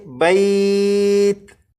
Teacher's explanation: تا کے نیچے جو زیر ہے اسے ختم کر دیں گے اور تا کو ساکن پڑھیں گے، جیسے بیت۔ · جب آپ تا کو پڑھیں تو تا پر قلقلہ نہ ہو